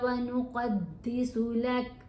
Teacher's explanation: یہ کاف ہے، قوف نہیں ہے، اس لیے یہاں پر کلکلا نہیں کرنا ہے